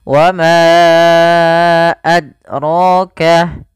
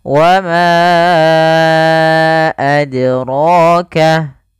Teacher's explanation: Nah, qalqalah ini artinya memantul. Maka huruf dal ketika dia sukun, dia harus ada pantulannya.